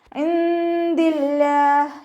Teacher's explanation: ഇൻദില്ലാഹ്, നൂൻ സാക്കിനയ്ക്ക് ശേഷം ഇഖ്ഫാഇൻ്റെ അക്ഷരമായിട്ടുള്ള ദാല് വന്നു. നൂൻ സാക്കിനയെ മറച്ചു വെച്ചിട്ട് മണിച്ചോതി കൊടുക്കുക കേട്ടോ